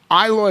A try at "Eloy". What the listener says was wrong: Aloy. Aloy. No, you pronounce the E like an A, not like an I. Definitely not like an